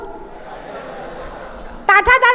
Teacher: ये मूर्धन्य शब्द है तो इनमें जीभ पलट के ऊपर लगती है